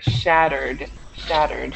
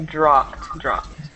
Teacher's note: When you're pronouncing these verbs with the ed, you don't add an extra syllable to the end. So it should be shattered, shattered.